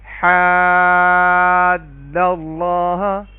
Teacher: یہاں پہ بھی 3 سے لے کے 5 الف کے برابر مد کریں گے، اور اس مد کو مد لازم کہتے ہیں۔